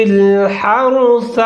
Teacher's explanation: ہا کو ظاہر کر کے پڑھنا ہے اور را ساکن ہے، را کو موٹا کرنا ہے۔